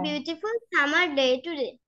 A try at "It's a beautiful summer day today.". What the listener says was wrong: It's summary. আচ্ছা এখানে সামারি হবে না, সামার, ওয়াইটা হবে না, সামার। It's a beautiful summer day today. Don't give why. Okay, summer.